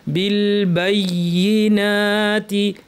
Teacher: ইয়াটা স্পষ্ট করে একটু জোর দিয়ে, যেহেতু তাসদিদ আছে